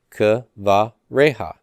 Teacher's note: Accents on the resh, and that's open and pre-tonic. It has to be long, so we're good there, right?